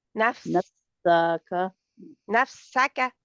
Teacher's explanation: سین کی آواز کو سیٹی پوری دیں